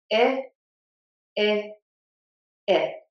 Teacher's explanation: The tongue is flat in the middle of my mouth. The tip is behind the top front teeth that is not touching. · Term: short I sound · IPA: /ɪ/